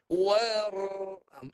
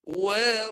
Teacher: Sekarang dia nak suruh ra tafkhim atau tafkhimur ra, tebalkan ra. Bunyi dia kena betul-betul tebal.